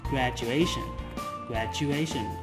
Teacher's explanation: Và các bạn nhớ với những cái từ có đuôi là ation thì mình sẽ nhấn vào âm A trước tion